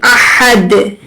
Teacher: और middle throat से हा को अदा करेंगे